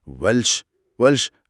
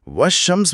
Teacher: जुबान ने कुदरती तौर पर आसान रास्ता निकाला। मुश्किल लाम को गिरा दो और अगले हर्फ शीन को ही दुगना कर दो।